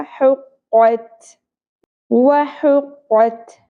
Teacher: ہا وسط حلق سے ادا ہوگا